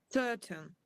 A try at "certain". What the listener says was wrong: That's good, but open your mouth.